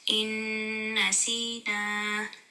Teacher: نون پہ شد ہے. غنہ ہوگا. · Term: نون غنہ